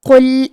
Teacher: قاف کو موٹی آواز میں پڑھیں گے اور لام ساکن کو ظاہر کریں گے